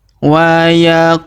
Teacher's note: huruf ku kita panjangkan, 2 harokat karena waw sukun di depannya